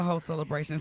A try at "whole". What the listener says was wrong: whole. Oh, with a LE on the end. Well, lady, you said hoe.